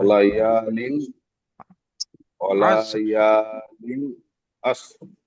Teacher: লামটা টান হবে না, ওয়ালা ইয়াটা টান হবে।